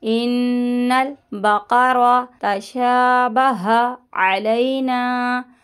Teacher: نون مشدد کا گنہ کر کے پھر نون کو لام سے ملائیے گا